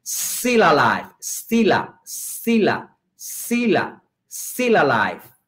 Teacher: Linking. Eso hace entonces que still alive se une, se pronuncia como una sola palabra. Y ahí vemos entonces tres palabras pronunciadas como si fueran una.